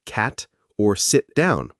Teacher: a held T, unreleased at the end of words like cat or sit down